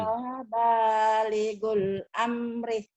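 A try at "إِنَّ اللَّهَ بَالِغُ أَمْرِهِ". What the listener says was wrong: Emang ada baligul? Emang ada alif lam sini?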